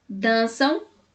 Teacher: na palavra dançam a sílaba tônica é Dan